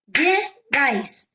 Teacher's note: La sílaba tónica está en el último lugar, por lo tanto es aguda.